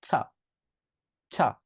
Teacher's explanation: উপরের দাঁতের নিচের অংশে জাস্ট লাগিয়ে রাখবেন এরপরে জাস্ট উচ্চারণ করবেন ধাক্কা দিয়ে টি উচ্চারণ করেন মানে ঠা এটা উচ্চারণ করেন কিন্তু ধাক্কা দিয়ে আর বাতাস সহ